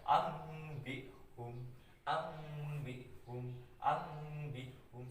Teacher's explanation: Jadi nun matinya dibaca seperti mim mati ya, itu iklab.